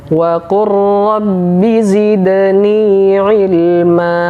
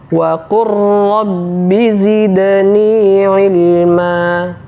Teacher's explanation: Huruf lamnya tidak lagi kita baca. Yang kita baca adalah huruf ra yang ditasydid. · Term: Idgham mutaqaribain